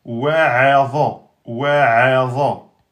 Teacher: wa aminci, a aminci, dha emphatique, tout en un temps